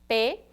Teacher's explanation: bilabial, lábio com lábio se toca